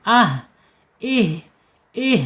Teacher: sifatnya ada di al-hams, mengalirnya napas ketika dia sukun. Ih mengalir ya.